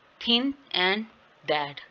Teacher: while producing the sound the tip of the tongue come behind the upper teeth creating narrow channel। कि इस तरह ये भी जो है वो आपकी जो टिप ऑफ टंग है वो अपर टीथ के साथ टच करती है, ठीक है, और ये एक नैरो चैनल बनाती है, मतलब थोड़ा सा रास्ते को तंग कर देती है। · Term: डेंटल फ्रिकेटिव्स